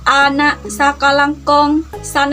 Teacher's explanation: pengucapan bunyi dengan lidah bagian tengah berada pada posisi paling rendah